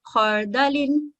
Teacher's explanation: را ساکنہ ہے اور اس سے پہلے فتح ہے تو اس کو ہم موٹا پڑھیں گے